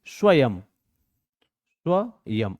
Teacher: अनुस्वार का जब हम उच्चारण करते हैं तो उच्चारण करते समय आधे म की आवाज जुड़ जाती है। जैसे हम लोग पढ़ते हैं ना, स्व, य और बिंदी है ये, तो इसको हम क्या पढ़ते हैं, इसको हम पढ़ते हैं स्वयं।